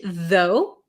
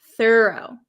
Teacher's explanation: Though has a vocalized TH, though, and thorough does not.